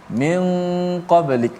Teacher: Maka kedua-duanya hukum ikhfa. Sempurna hukum itu dengan cara kita menyembunyikan nun mati itu. Nun mati itu kita tak jelaskan matinya. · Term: ikhfa hakiki